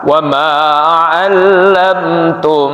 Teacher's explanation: Di situ ada mim sukun ketemu dengan huruf mim yang disebut idgham mutamatsilain. Jadi jangan buru-buru, apalagi diputus, ya.